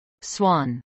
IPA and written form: swɑːn (swan)